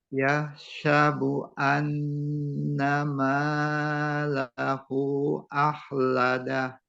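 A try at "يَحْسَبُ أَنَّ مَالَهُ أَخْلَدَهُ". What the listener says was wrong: Nah, kebalik ya. Ma-nya kepanjangan, hu-nya kurang panjang. Jadi lahu, ma-nya dua, lahu hu-nya yang lebih panjang. Lahu akhladah.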